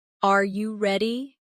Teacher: when a native speaker asks a yes or no question like, Are you ready? the pitch of their voice goes up at the end.